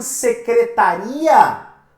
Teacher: Já em secretaria, você tem a separação, você tem o hiato entre o I e o A.